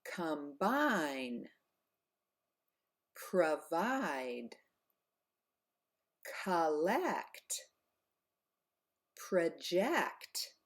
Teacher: in unstressed syllables often the O turns to an AA